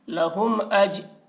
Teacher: میم ساکن کے بعد با اور میم کے علاوہ حرف حمزہ آ رہا ہے، اس لیے میم کو ظاہر کر کے پڑھیں گے، اس کو اظہار شفوی کہتے ہیں۔